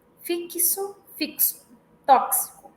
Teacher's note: Então, fixo e tóxico, nós temos o KS, né? Que se. Fixo, fixo, tóxico.